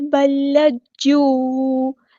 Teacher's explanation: اس میں جو پہلا لام ہے ساکن ہے وہ بالکل ڈراپ ہو جائے گا، اور جو دوسرا لام ہے وہ مشدد ہے، تو ایک اس کا ساکن اس کے اندر چھپا ہوا ہے اور ایک اس کی حرکت ہے زبر یعنی فتح۔ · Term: ادغام مثلین